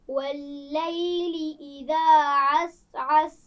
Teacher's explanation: सीन पर कलकला ना होने पाए, क्योंकि सीन हरूफ कलकला में से नहीं है।